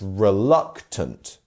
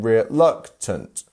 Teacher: the luck part is our stress syllable